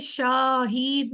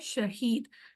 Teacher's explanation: शहीद में जब शीन के ऊपर जबर आता है हम सिर्फ आवाज निकालते हैं श